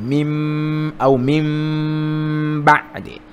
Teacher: kuibadilisha nuni iwe mim kwa kutia ghunna kwa muda wa haraka mbili. Mim, na kuna ulimi unakuwa wa design mbili. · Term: iqlab